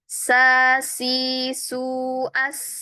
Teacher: Sedangkan sin sa si su as terbuka ya. Kondisi pita suaranya itu terbuka. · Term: hames